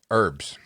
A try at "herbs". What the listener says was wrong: The H is silent.